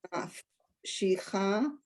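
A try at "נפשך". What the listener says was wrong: Nafshecha, not she.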